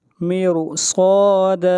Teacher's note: صاد کو موٹا پڑھیں گے، صاد حروف استعلاء میں سے ہے، اور را کو موٹا پڑھا جائے گا، را ساکن کے بعد حروف مستعلیہ میں سے صاد ہے